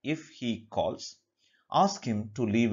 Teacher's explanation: the first part or the conditional part will take the rising intonation